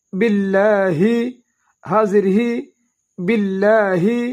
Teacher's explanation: با کو لام کے ساتھ ملائیں گے، لام کو دو حرکات لمبا ادا کریں گے